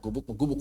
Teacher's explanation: biasanya Indonesia itu kalau yang akhirnya G biasanya diubah jadi K